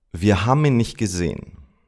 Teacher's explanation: Haben becomes ham, and the T of nicht disappears.